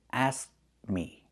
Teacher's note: The T is a stop T asked. We make the position but we don't release it because we're linking it to a consonant the mm in me.